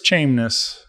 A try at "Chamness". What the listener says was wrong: Chamness. Not quite like an A.